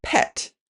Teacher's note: That's because the b in bet is a voiced consonant, which means that the vocal cords in your throat are vibrating when producing the sound. The p in pet is voiceless, which means the vocal cords aren't vibrating. This is a phenomenon that occurs naturally.